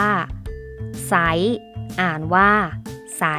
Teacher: เราจะอ่านออกเสียงเฉพาะพยัญชนะตัวหน้าเท่านั้นและไม่ออกเสียงเรือค่ะ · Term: คำควบกล้ำไม่แท้